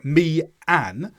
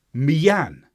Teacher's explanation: followed by an we don't have a pause between the two instead of saying me an we use a y to get between them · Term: intrusive vowel